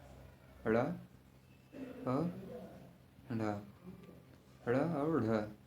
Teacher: ड़ और ढ उत्क्षिप्त व्यंजन है